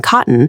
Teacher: specifically the glottal stop found in cotton